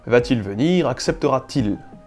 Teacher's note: à la troisième personne, c’est un T que l’on dit épenthétique que l’on est souvent obligé de rajouter afin que l’on puisse prononcer correctement